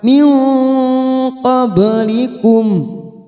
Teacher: nun sukun bertemu qaf, ikfa hakiki, kita samarkan bunyi nun sukun 3 harokat